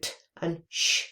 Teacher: we put the voiceless alveolar plosive and the voiceless post-alveolar fricative, so t and sh together, combine them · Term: Affricates